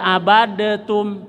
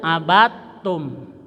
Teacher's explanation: Jadi dal bertemu ta, bagus dibaca ta, bagus. Jadi jangan dibaca abadetum.